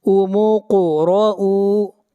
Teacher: قاف کے اوپر قلقلہ ہوگا، آواز کو ہلائیں گے